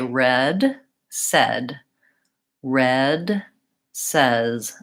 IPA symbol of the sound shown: ɛ